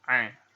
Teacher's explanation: Jadi kayak huruf A biasa tapi ada penekanan dan dikeluarkan dari tengah-tengah tenggorokan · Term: huruf Ain